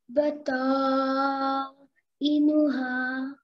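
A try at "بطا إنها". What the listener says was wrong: Perfect. Good. Well done.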